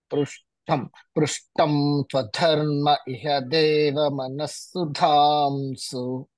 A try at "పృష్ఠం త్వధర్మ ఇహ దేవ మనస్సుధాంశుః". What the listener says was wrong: పృష్ఠం అన్నప్పుడు కూడా పెదాలు ముయ్యకుండా ఉండాలన్నయ్య. పృష్ఠంత్వధర్మ ఇహ దేవ మనస్సుధాంశు. పృష్ఠంత్వ అంటున్నారు కానీ అక్కడ పెదాలు ముయ్యట్లేదు కదా?